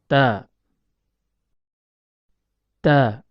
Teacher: Huruf ta keluar dari tempat pertemuan antara ujung lidah dengan pangkal gigi seri atas.